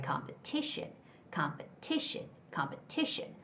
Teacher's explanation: the stress comes in front of t i o n. So, it's got to be competition.